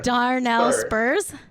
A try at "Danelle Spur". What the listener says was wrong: Danelle Spur. No R. There is an R, but it's silent, and also you don't say it.